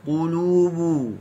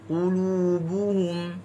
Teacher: Qulu, qaf bagi depan qu, lam bagi depan lu, ba bagi depan bu. Muncung semua.